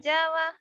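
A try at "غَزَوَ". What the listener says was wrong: Gojawa, Z-nya tuh. Jangan go Jawa, ke Jawa. Z-nya raku. Gozawa,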